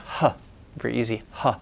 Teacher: finally there's a glottal fricative the H sound